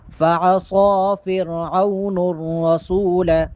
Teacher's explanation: صاد کو موٹا پڑھیں گے اور صاد کے اوپر چونکہ کھڑا زبر ہے، صاد کو ایک الف کے برابر لمبا کر کے پڑھیں گے